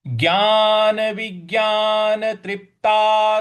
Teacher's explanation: ज्ञान विज्ञान व के व पे थोड़ा सा आघात देना है बल लगाना है